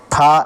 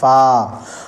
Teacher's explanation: اوپر کے دانتے کا کنارہ نیچے کے ہونٹ سے مل کر فا ادا ہوتا ہے